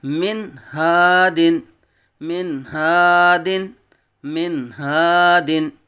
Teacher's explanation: اس کو من ہادن نہیں پڑھیں گے، یعنی یا گناہ نہیں کریں گے، اس کو من ہادن نہیں، بلکہ کیا کریں گے؟ نون کو ظاہر کریں گے، کیونکہ یہاں اظہار کا قاعدہ ہے